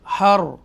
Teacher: را کو ہم نے بولڈ پڑھیں گے تفخیم کے ساتھ، رائٹ، کیونکہ را ساکنہ ہے اور اسے پہلے زبر ہے